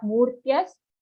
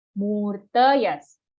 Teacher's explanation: Kaunteya, murtayas sambhavanti yaha. Murtayas, mu dirgha, after that half ra, join to full ta, not murtyas, murtayas.